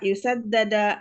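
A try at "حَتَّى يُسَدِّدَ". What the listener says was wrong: Yusaddida kasrah.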